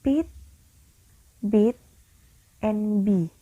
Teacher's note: It is sounds in which the airflow is modified by forming a constriction between the lower lip and the upper lip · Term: bilabial sounds